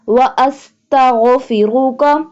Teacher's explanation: سین سیٹی کی آواز سے ادا ہوگا، غین حلق کے اوپر والے حصے سے ادا ہوگا اور غا کو پر پڑھیں گے۔